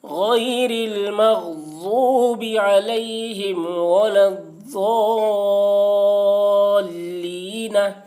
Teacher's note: حرف مد یعنی یا کے بعد نون کے اوپر سکون وقف کی وجہ سے ہے، اس لیے مد عارض وقفی ہوا، اس میں طول توسط قصر تینوں جائز ہے، طول اولا ہے، پھر توسط، پھر قصر کا مرتبہ ہے۔